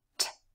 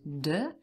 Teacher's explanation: We have t and d. Again, they are formed in the same place in the mouth, but d uses the vocal cords and is louder.